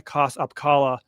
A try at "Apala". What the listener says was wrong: It's just Apala, I think. The K is silent.